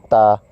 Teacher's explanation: تا نکالنے کا طریقہ یہ ہے کہ زبان کا جو کنارہ ہے وہ اوپر کے جو دو دانت ہیں جنہیں ثنایا علیہ کہتے ہیں ان کی جڑ میں لگ جائے، تا۔ اس کے بعد ہے ثا۔